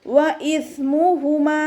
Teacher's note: വ ഇസ്മുഹുമ, കൊൽക്കല ലെറ്റേഴ്സിന് മാത്രമാണല്ലോ നമ്മൾ ഫുൾ സുക്കൂന് കൊടുക്കുന്നത്. സ ഇവിടെ കൊൽക്കല ലെറ്റേഴ്സിൽ പെട്ടതല്ല, അപ്പോൾ അതിന് നമ്മൾ ഹാഫ് സുക്കൂന് കൊടുക്കാനായിട്ട് ശ്രദ്ധിക്കുക